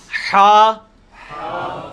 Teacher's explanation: ہا، حلوائی والا جو ہا ہے، یہ وسط حلق سے یعنی حلق کے درمیان سے نکلتا ہے. یہ کبھی آپ وہ گلے والی ٹافی کھائیں نا، وہ والی آواز ایکزیکٹ بالکل کلیئر وہاں سے جو نکلتی ہے نا، یہ ہا کا مخرج وہی ہے.